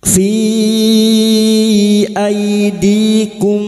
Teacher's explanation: Fi bertemunya mat dengan hamzah di lain kalimat mad jaiz munfasil. Mad jaiz munfasil 5 harokat kita panjangkan.